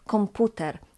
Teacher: we have a sonorant M, but the voiceless P is still pronounced as P